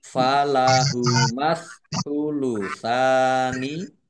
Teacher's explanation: alif lam samsiah karena tidak dibaca langsung masuk ke huruf berikutnya yaitu sa, ditandai saknya ada tasdidnya, saknya dibaca double.